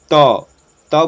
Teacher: त का आप जब उच्चारण करते हैं तो आप गौर कीजिए कि जीभ जो है दांत की ओर ठेकता है। जैसे ही आप त बोलिएगा तो जीभ दांत पे ठेकता है